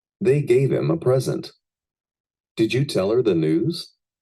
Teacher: How the H and th Sounds are Cut off at the beginning of the object pronouns